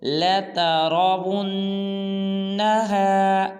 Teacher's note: غنہ کریں گے، نین کے ناک میں آواز کو لے جائیں گے